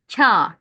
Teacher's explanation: Ka yani ince bir ae arası sese çevrilir.